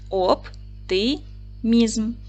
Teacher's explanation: наголос падає на третій склад о голосний п твердий приголосний Т твердий приголосний и голосний м